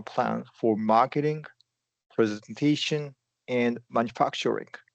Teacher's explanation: When there's a list of items, specifically here, you're going up in pitch for each item until you go down to the last one.